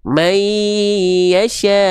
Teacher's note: Nah, jadi pastikan ketika n-nya lebur ke I, jangan sampai dia cuman may aja tapi may masuk hidung dia lebur sengau. May yasya ya gitu ke Y sepertinya bukan I.